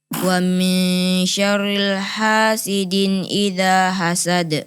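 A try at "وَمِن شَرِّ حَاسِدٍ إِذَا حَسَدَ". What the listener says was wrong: Wa min syarriha, bukan syarrilha. Coba ulang sekali lagi.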